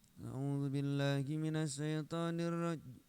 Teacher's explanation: model qiraat tilawati itu lagunya kan ujungnya mesti turun. Ujungnya turun.